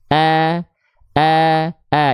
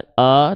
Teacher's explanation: infita itu artinya adalah rongga mulut atau Aula mulut kita terbuka istifal lidah kita datar infitah Aula mulut a terbuka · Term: istifal dan infitah